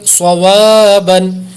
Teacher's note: علیہ صاد زبر صو، واو الف زبر و، صواب، با دو زبر بن، صوابن. صاد کو پر کریں گے، واو پر الف مدہ ہے لمبا کریں گے